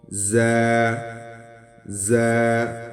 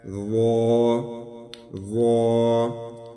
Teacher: ضا ضا student, یہ زا اور ضا میں فرق ہونا چاہیے، یہ زا باریک اور سخت پڑھیں گے، ضا تھوڑا نرم اور موٹا پڑھیں گے